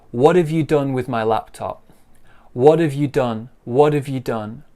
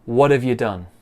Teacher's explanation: have becomes what if what if you done becomes you're done so you becomes ya and done stays the same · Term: linking and weak sounds